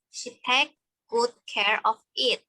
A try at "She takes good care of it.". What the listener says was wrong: It. Ini tadi them ya. It ya. Tadi kamu ngucapin takes-nya, S-nya kurang kedengar ya. She takes, ada ujungnya ada S dikit ya. She takes good care of it ya. S.